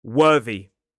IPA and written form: ˈwɜːði (worthy)